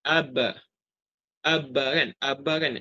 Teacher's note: Nombor satu ni dia tunjukkan contohlah ataupun gambaran ba sukun yang tidak dibaca qalqalah diidghamkan keluar melalui benturan di antara dua bibir